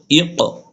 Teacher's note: কফের উপর জজম, এই জন্য আমরা কি করব, প্রতিধ্বনি করে পড়তে হবে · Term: কলকলা